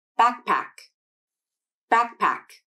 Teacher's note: slowly so you can hear how the k sound is unreleased my tongue remains pulled back and in contact with the soft palate as i transition to the p consonant in pack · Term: unreleased k